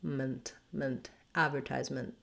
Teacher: advertisement and then i should write this as a u because we use a schwa here in this last syllable i almost go directly from my m to my nt